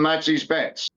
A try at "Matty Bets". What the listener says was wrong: Also, it's it's Matty Bets, not Masty.